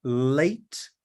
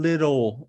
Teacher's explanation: there is what we call the Clear L which is the L in late and in um lentils and we have the dark L as in little